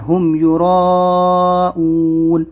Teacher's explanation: इसमें मीम को ज़ाहिर करना है क्योंकि मीम साकिन के बाद में या है, तो यहाँ पर हमको हुम को मीम को ज़ाहिर करना है, हुम युराऊन, मत खींचना है, ऊन को भी लंबा करना है।